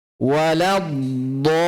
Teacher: Ya, do ini panjang 6 harokat.